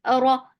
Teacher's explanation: Make raw heavy for fatha open your jaws. The sound is short.